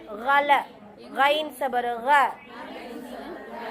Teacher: கைன தொண்டையின் ஆரம்பப் பகுதி